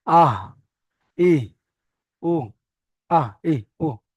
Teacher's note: হা উচ্চারণ হচ্ছে কণ্ঠনালীর শুরু থেকে। কণ্ঠনালীর শুরু মানে এইদিকে নয়, এই বুকের দিকে কণ্ঠনালীর শুরু।